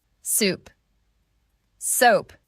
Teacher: >> In soup, your lips stay rounded the whole time. >> In soap, your jaw drops slightly, then your lips round at the end.